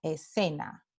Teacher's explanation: En el resto del mundo hispanohablante, estas dos letras SC, cuando vienen seguidas de E o I, representan el fonema S.